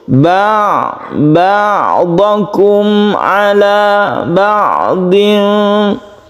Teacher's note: Mim mati bertemu dengan ain izhar syafawi, kita baca izhar atau terang dan jelas, tidak berdengung.